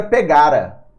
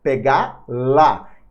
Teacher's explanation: Esse R se transforma em L, se junta com A, e eles ficam juntos ali.